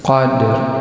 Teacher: Lailatil qadr, ini Lailatul Qadr, huruf qaf dibaca tebal, huruf dal punya sifat qalqalah dibaca mantul ketika sukun atau disukunkan. Huruf ra ini berbaris bawah yang disukunkan dibaca tipis.